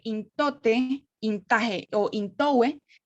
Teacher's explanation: vemos que la N es alveolar. Alveolar o dental igual que la T.